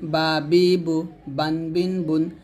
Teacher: বাটা দুই ঠোঁট মিল করে আপনারা উচ্চারণ করবেন